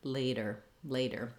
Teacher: voice on and not building up a lot of pressure so I don't want laid der with a strong D but rather lightly tap up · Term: flap T